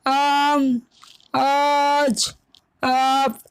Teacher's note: ذرا کھینچ کر پڑھی جاتی ہے، ایسے الف کو ہم الف ممدودہ کہتے ہیں۔ جیسے آم، آج، آپ وغیرہ۔